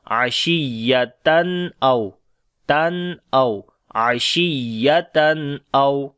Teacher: Ashiyatan. After the tanween, the next is hamza. We make izhar halaki here, like the clear sound of noon.